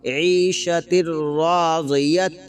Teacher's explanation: تنوین کے بعد را آ رہا ہے جو حروف ادغام میں سے ہے، یرملون میں سے ہے، تو یہاں پر بغیر غنہ کے ملا کر پڑھیں گے